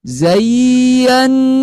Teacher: Coba hati-hati tidak sampai dengung ya. Ya-nya tidak sampai dengung karena ini bukan termasuk guna apa.